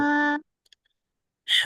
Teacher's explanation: কণ্ঠনালীর মধ্যখান চেপে পড়তে হবে আপনাকে। কণ্ঠনালীর মধ্যখান চেপে পড়তে হবে।